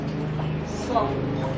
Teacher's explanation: Kemudian sifat hurufnya agak tinggi sedikit, artinya lidahnya lebih agak dinaikkan ke atas sedikit, dilipat sedikit, kemudian bunyinya seperti bunyi cuitan burung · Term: huruf sod